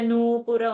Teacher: Nu is long and Pu is short